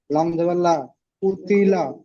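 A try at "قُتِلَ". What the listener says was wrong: কুতি বলছেন, কু টান হবে না, কফ পেশ কু। অক্ষর আলিফ থেকে ইয়া পর্যন্ত অক্ষর টান দিয়েছিলেন, ঠিক অক্ষরগুলো টান দেন। কফ পেশ কু, তাজেরতি কুতি, লাম জাবাল্লা কুতিলা, হামজা সদ জাবার আস, কুতিলা আস, হা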